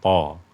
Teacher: Huruf to juga di awalnya memang tersentuh makhrajnya, tapi di akhir to kan tidak ya, tidak ada sentuhan apapun. To, mulutnya juga terbuka, tidak tertutup.